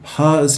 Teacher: an example of a long voice onset time